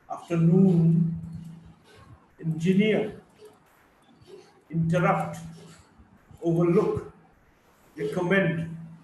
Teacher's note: Primary stress on the third syllable and secondary stress on the first syllable